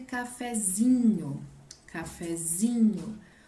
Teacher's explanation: E aí passa a ser cafezinho, cafezinho. O zi é a mais forte, quando ele está no grau diminutivo.